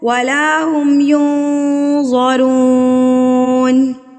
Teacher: نون ساکن اور تنوین کی آواز کو ناک میں چھپا لینا، یعنی کہ نون کے مخرج کے ساتھ آپ نے زبان کو ٹچ نہیں ہونے دینا، اوپر نہیں لگنے دینا، ہوا میں چھوڑ دینا ہے. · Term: اکفا